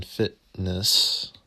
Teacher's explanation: The glottal stop, as in fitness